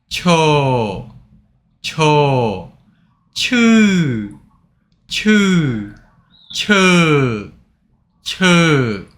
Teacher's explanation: Cho has aspiration sound ch.